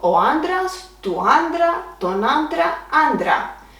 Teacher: Now let's see another masculine noun, ο άντρας, which the accent is on the second syllable from the end. And it will not change in singular at all.